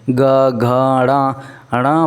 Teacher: जैसे आप ग बोलेंगे ना, हमारे स्वर तंत्रियों में क्या हो जाता है, झंझनाहट होता है दोस्तों। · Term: सघोष